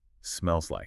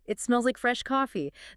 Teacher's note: The consonant sound at the end of the first word links directly to the consonant sound of the next. The e at the end of smells pushes right up against the L in like.